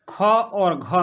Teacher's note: ख और घ में ज़्यादा जोर देना पड़ता है, तो वो ऐसे महाप्राण हो जाएंगे। जिसमें ज़्यादा सांस निकलती हो, ठीक ना, सांस की मात्रा जिस वर्ण के उच्चारण में ज़्यादा निकलती हो तो उसको महाप्राण कहते हैं, और जिस वर्ण में सांस की मात्रा कम निकलती हो उसको अल्पप्राण कहते हैं।